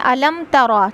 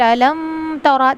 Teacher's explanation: Okay, الم تر کیف فعل ربک بعاد، الم تر، الم تر میم ساکن کا اظہار ہوگا، یہاں پہ ہمیں بغیر غنہ کے پڑھنا ہے۔ الم تر، اس کی کریکٹ پروننسیشن ہے الم ترا، ٹھیک ہے، اگر ہم یہاں پہ غنہ کر دیں گے میم کے اوپر الم ترا تو یہ غلط طریقہ ہوگا، ہمیں کیا کرنا ہے، جلدی پڑھنا ہے۔